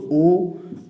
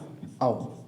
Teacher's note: ओ और औ इनके उच्चारण स्थान कंठ ओष्ठ से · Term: कंठोष्ठ